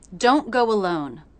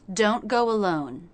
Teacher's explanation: Each of these words has the OH as in NO diphthong in American English.